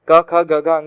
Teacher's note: उनकी यानी का वर्ग की जो आवाज है वो कंठ से निकलेगी। क ख ग घ अंगा कंठ से निकलेगा।